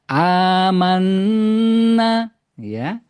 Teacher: Kalau di Madinah didahului dengan hamzah kemudian alif dibaca 2 harokat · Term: mat badal